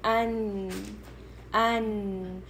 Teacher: تو اب میں پوچھوں گی نون کا مخرج کیا ہے، تو آپ کہیں گی کہ یہ جو ٹنگ کی ہے وہ تھوڑی ٹیتھ تک جا رہی ہے